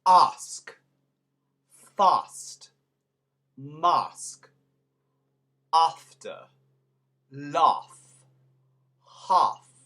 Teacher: One change that you will see is the majority of the time, there are exceptions, but the majority of the time when you have an a sound in English, like ask, the British pronounce ah